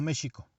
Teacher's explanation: el sonido de la X sería sh, como cuando se dice el anglicismo show.